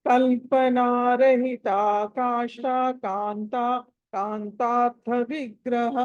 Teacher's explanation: కాష్ట కాంత అని కలిపి చదవాలి, దాన్ని వేరు చేయకూడదు. ఒకటేగా చదవాలి.